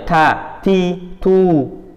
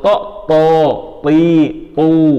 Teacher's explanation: Kalau tak ya ta, ti, tu, tipis. Kalau to, pi, tu, tebal semua. Harokat fathah, kasroh, dhammah wajib tebal.